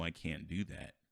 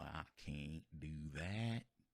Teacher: pronouncing the I more like ah and the can't more like can't.